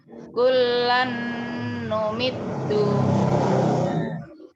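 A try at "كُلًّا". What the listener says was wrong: Untuk lam sebentar, untuk lam double ini sekedar double, tidak ditahan. Jangan kullan numit, gak ada gunanya itu, langsung kullan numit, ya, kullan numitu, begitu ya.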